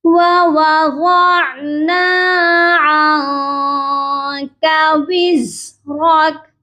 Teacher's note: عین کی آواز کلیئر ہو، غانا نہیں کہیں گے۔ ووضعنا عنك وزرك، نون ساکن پر یہاں آپ نے آواز کو ناک میں چھپانا ہے، عن، نون کی آواز پراپر نہیں ہونی چاہیے۔